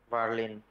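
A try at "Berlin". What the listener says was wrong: বের্লিন না, বার্লিন। এ আর একসাথে আছে না, এ এবং আর একসাথে থাকলে আ উচ্চারণ হয়, বার্লিন।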